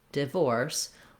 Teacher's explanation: both divorce and diverse have second syllable stress. So the first syllable in divorce, in the dictionary, you're going to see it with a little I symbol.